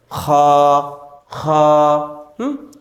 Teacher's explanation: এর মাখরাজ কোথায় হলকের শেষ ভাগ হইতে খলক এই যে এটি হচ্ছে আমাদের হলফ এটির শেষ ভাগ খুঁ